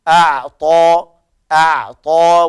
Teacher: ونحافظ على التوسط في العين